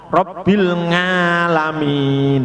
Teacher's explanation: Sebagian daerah Magelang ke sana ain jadinya ngo.